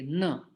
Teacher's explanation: ये है दंत न, तो दांतों को जिह्वा स्पर्श होने चाहिए